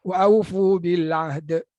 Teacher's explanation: Ain dengar, da dengar. Ha hilang.